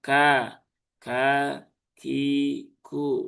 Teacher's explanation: Tidak sama dengan huruf K di dalam bahasa Indonesia. Dia ada hembusan udara yang ikut keluar ya. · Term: huruf kaf